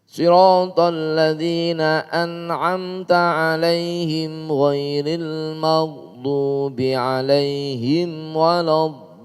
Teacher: Mad wajib musaqqal. Jadi waladdallin ada panjangnya, ada tekanannya baru dilanjutkan.